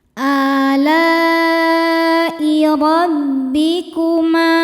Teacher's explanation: Mad tabi'inya alif didahului fathah, kemudian hamzahnya i ada pada kata alai, maka lamnya panjang, boleh 4 boleh 5 harokat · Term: mad wajib muttasil